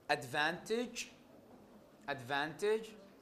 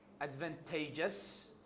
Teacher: The primary stress remains on the stem.